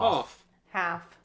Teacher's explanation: in neither case do we pronounce the L as far as I'm aware